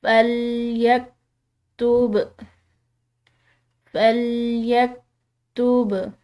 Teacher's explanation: با جو ہے یہ حروف قلقلہ میں سے ہے تو اس کو ہم نے ہلاتے ہوئے چھوڑنا ہے